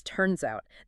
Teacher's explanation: The T in it is almost entirely swallowed, and the S at the end of turns forcefully links directly into the O of out. It creates a Z sound